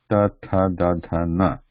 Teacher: this is a straight tip of the tongue straight and is pressing against back of the front teeth